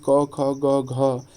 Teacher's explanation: ये कंठ से बोले जाते हैं, कंठ से